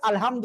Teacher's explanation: হা গলাটা চেপে পড়তে হবে